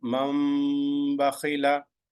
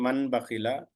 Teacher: A noon sound must be changed to the meme sound. So mam bakhila, you are not saying man bakhila. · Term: iqlab rule